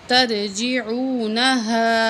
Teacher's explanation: ہا زبر الف مد ہا، یہاں ہم الف کو 7 الف کے برابر کھینچ کے پڑھیں گے